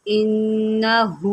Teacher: نون مشدد ہے، اس کے اوپر جو ہے غنہ ہوگا